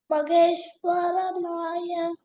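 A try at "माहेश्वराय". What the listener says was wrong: No, Varanaya is not there. Varaya.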